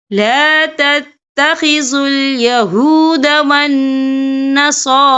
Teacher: یا ایہا الذین آمنوا لا تتخذوا اليہود والنصارى، یہاں دیکھیں والنصارى، یہاں نون مشدد ہے تو یہاں پر غنہ ہوگا، اور صاد کے اوپر کھڑی حرکات ہے اور را کے اوپر بھی کھڑی حرکات ہے اور چھوٹی سی مد بھی ہے، تو ہم یہاں 3 یا 4 حرکت کے برابر کھینچ کے پڑھیں گے